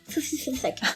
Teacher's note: la langue, au lieu de rester dans sa cage, c'est-à-dire dans sa maison derrière les dents, eh bien, elle passe entre les dents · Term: zozotement